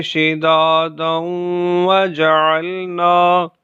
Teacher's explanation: ان آیات میں آیت کے آخری حرف پر تنوین ہے اور آیت کے پہلے حرف میں واو حروف یرملون میں سے ہے۔ ملا کر پڑھنے کی صورت میں ادغام اور غنہ ہوگا